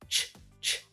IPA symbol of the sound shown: tʃ